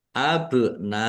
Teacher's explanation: Mat wajib muttasil harus dibaca panjang 5 harokat.